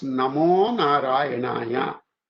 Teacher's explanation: aha plus a soft consonant, aha changes to o.